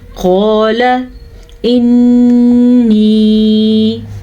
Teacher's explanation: قال انی. قال قاف کو موٹا پڑھیں گے، قاف ہمیشہ ہی موٹا پڑھا جاتا ہے، اور الف مدہ کے ساتھ پڑھیں گے کیونکہ قاف کے ساتھ الف مدہ ہے، الف سے پہلے زبر کی وجہ سے.